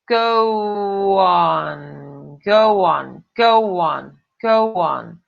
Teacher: Esse som de W, ele parece aqui no meio, ele que a gente chama de elision, ok?